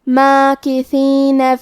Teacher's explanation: کلمت ماکثین میں میم پہ کھڑا زبر ہے، تو یہاں مد الف ہے، ہم اپنی آواز 2 مد کے برابر لمبی کریں گے۔